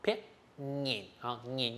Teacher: 它的声调是一个入声字，所以呢它也是短促的